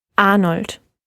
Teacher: at the end of a syllable it's going to get that open r sound · And with a T at the end, of course. The voiceless D, which basically turns it into a T sound.